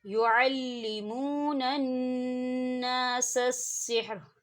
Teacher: واو ساکن ہے، واو ساکن سے پہلے پیش ہے تو یہاں واو مدہ ہوگا